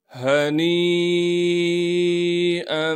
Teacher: یا مدہ کے اوپر بڑی مد ہونے کی وجہ سے نون کو 5 الف کے مقدار کھینچیں گے